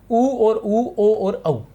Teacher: उ जो है उसमें जब बोलते हैं तो वृत्त का आकार बनता है। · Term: वृत्ताकार